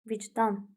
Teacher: Vicdan cjə keçir. Vurğu son hecəyə düşür